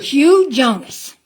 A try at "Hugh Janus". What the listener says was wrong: With an A. Janus.